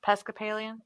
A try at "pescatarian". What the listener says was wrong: No, you always say pescapalian, but it's pescatarian. Yeah, no, pescatarian.